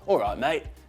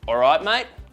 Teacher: so you've got the difference between a cockney alright mate and an Australian alright mate going up at the end